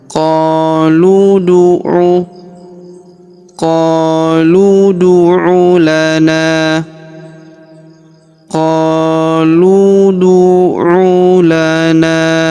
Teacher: Huruf lu langsung sambung masuk ke huruf da yang berharakat sukun ya. Kita pantulkan atau kita qalqalahkan.